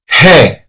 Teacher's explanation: However, however, if it is that we're speaking about the letter G, the name of the letter G in Spanish is he, which is the soft sound of the G. It sounds like an H. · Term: soft G